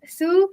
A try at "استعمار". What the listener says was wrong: where's su? There's no dhamma. استعمار. استعمار. The alif is long. استعمار.